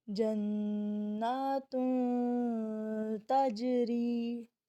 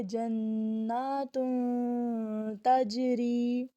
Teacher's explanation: تنوین کے آگے پھر حروف اخفا میں سے تا ہے تو یہاں پر تنوین کو اخفا کی صورت میں ادا کریں گے جنات تجری. ٹھیک ہے، وہی بات ناک کے اندر آواز کو 3 سیکنڈ کے لیے ہمیں چھپا کر رکھنا ہے، مکمل غنہ ادا نہیں کرنا.